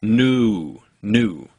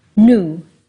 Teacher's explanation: in many dialects of English, we tend to pronounce 2 vowels when we say a word like new. We start on before we get to u. · In Mandarin, you'll start and stay on u